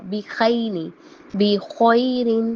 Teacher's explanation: یہ ادائیگی ہوتی ہے بیسیکلی خوا کی اور غین کی، کہ یہ ادنیٰ حلق سے نکلتے ہیں، حلق کے پہلے حصے سے نکلتے ہیں، اور اس طرح سے ان کو ادا کیا جاتا ہے۔